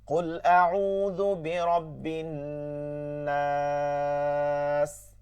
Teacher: তো মাদের হরফ বামের হরফে যখনই এরকম পড়তে হবে 4 নম্বর ওয়াকফ করে, তখনই কি করতে হয়? মাদ্দে আরজি 3 আলিফ টানিয়া পড়িতে হয়